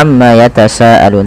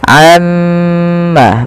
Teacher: kita harus menahan bunyi suara mim yang berharakat tasdid karena dia termasuk daripada bacaan gunah nah jangan kita langsung baca Amma yatasaalun tapi tahan dahulu gunahnya